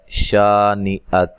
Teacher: کاف کو باریک پڑھنا ہے، حمزہ کو تحقیق سے پڑھنا ہے، لمبا نہیں کرنا